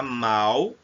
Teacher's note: com L, o L aí existe o som de U